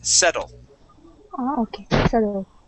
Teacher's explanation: those two T's actually sound like a d